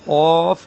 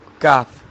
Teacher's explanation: قاف کو موٹا کرنا ہے اور کاف کو باریک کرنا ہے